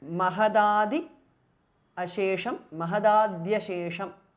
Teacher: t changes to d because of sandhi